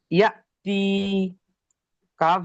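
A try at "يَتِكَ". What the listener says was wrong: কাপ যাবার কা টান হয়? কাপের উপরে জাবার আছে, জাবারটি হলো হারাকাত, তাহলে হালকা টান হচ্ছে, ওর হালকা হবে না। টিকা, টিটা হলো ইয়া মাদ্দা।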